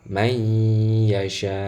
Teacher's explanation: Nah, cara bacanya harus idgham, nun sukun harus masuk ke dalam huruf ya sekaligus nanti harus gunnah. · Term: idgham bi gunnah